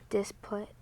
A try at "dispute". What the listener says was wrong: Now, that's very close. That's what it would be if there was no silent E. What's that silent E gonna do?